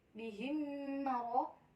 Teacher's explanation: Pada kata bihim maro terdapat hukum bacaan yaitu idgham mislain, cara bacanya itu dibaca masuk dengan dengung dan ditahan sampai 3 harokat